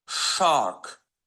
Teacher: Uzun a və sonda boğu R.